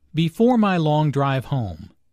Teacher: Notice the emphasis and intonation on home.